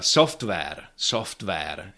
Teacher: again no [w] and nice r at the end